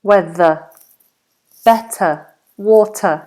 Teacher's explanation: this ER ending is always a schwa